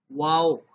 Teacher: ہونٹوں کی گولائی سے پڑھا جاتا ہے، ہونٹوں کو گول کیا جاتا ہے واو کو پڑھتے وقت